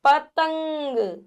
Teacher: यहां पे आपको न की ध्वनि आएगी हल्की सी